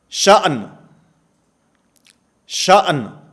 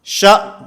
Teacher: حمزہ ساکن کی آواز تو آ رہی ہے، نون کی آواز ختم ہو گئی ہے